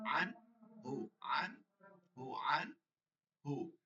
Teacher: বামের হরফ নুন সাকিন বা তানবিনের বামে, নুন সাকিন বা তানবিনের বামে ইজহারের কোন হরফ আসিলে, ইজহারের যে কোনো, এই যে ছয়টার একটা হরফ আসিলে নুন সাকিন তানবিনের বামের হরফে যদি দেখেন যে এই হরফগুলো আসে, ওই নুন সাকিন বা তানবিনকে গুণনা ছাড়া স্পষ্ট করিয়া পড়তে হবে। কোনো সময় গুণনা করা যাবে না এবং নাকের মধ্যে নিয়ে পড়া যাবে না।